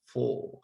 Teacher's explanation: in a phonological level we could have f o r and in a phonetic level we have four so you delete the r and that o becomes longer